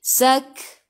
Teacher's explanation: Kaf ada sukun masuk ke dalam kaf. Ingat kaf sifat hurufnya hamas. Kena ada sedikit sahaja angin.